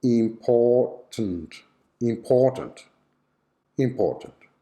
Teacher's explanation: the schwa is on the syllabic m sound